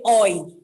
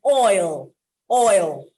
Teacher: some would say oi they leave out the lateral